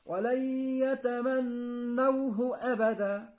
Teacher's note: لا هو أبدا، لا هو ما تمدش، اخطف الهاء المضمومة فقط